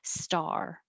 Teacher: to open ah and then your tongue has to curl back for the r and hold it in that position a little longer